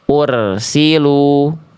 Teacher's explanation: Contoh ursilu itu pangkal lidahnya tidak naik. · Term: bacaan yang keliru